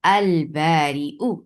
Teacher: ابغی حجک، اب تو آ گیا با، تو اس با کو اس با کی وجہ سے اس لام تعریف کے لام کو ادغام کی بجائے اظہار کر کے پڑھا جائے گا